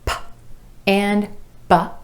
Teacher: p and b, both made by bringing the lips together